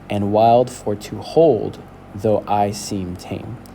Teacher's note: I would say that tame, it's a little bit drawn out. I would say that that's a stress syllable.